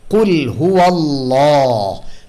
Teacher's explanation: কুল হুয়াল্লাহ, ল ভারী করব কিভাবে? জিহ্বার পিছের অংশ উপরের দিকে উঠিয়ে দিব, তালুর দিকে আওয়াজটা যখন ঊর্ধ্বমুখী হবে তখন আওয়াজটা ভারী শোনা যাবে। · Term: তাফখিম